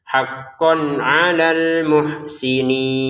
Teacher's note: Haqqon di sini karena bertemu ain maka dibaca dengan jelas maka jangan dibaca dengung